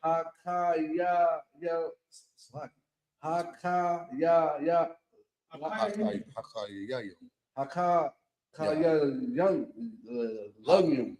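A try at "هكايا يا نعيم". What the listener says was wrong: No, you too high. Hakaya Yanyum. Hakaya Yanyum.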